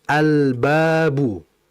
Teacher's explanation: apakah lamnya jelas atau tidak lamnya jelas maka disebut dengan izhar alqamariyah